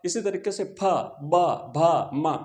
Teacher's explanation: प इसी तरीके से फ ब भ मतलब पूरी जो लाइन है इस पूरी लाइन में जितने भी वर्ण है उन समस्त वर्णों का उच्चारण करने के लिए हमें दोनों होठों को मिलाना पड़ेगा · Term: ओष्ठ